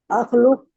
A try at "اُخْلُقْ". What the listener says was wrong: उखलुक कमजोर है ना, आखलुक याद रखिएगा, हमजा इसके ऊपर जबर नहीं आएगी, यहाँ पे जबर नहीं आएगी, पेश आएगी या जेर आएगी। उखलुक, उखलुकू, ला